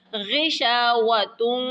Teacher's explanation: غین کو موٹا کریں گے اور غین حروف حلقے میں سے بھی ہے